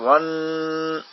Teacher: یہاں ون یہ گناہ ہے، نون کا مخرج تالو اور زبان کی نوک وہاں لگے اور شدت پیدا ہو اور ناک میں آواز جائے، یہ گناہ ہوتا ہے.